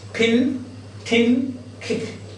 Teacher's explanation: Aspirated means when you pronounce this P, it is accompanied by a puff of air